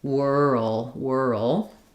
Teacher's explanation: Because we are going from the R to the L, whirl, it's there's a little bit of a sound between the R and the L. So if that part is difficult for you, think about it as whirl.